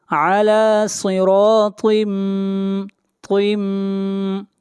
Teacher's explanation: علی صراط طم، یہاں پر تنوین کے بعد اگلا حرف میم ہے اور میم حروف یرملون میں سے ہے، ادغام مع غنہ کریں گے · طا بھی حروف مستعلیہ میں سے ہے، طا کو موٹا پڑھا جائے گا